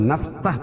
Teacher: نفسہ کو وقف کی صورت میں نفسہ پڑھیں گے، یعنی الٹا پیش کو ہائے ساکنہ سے بدل دیں گے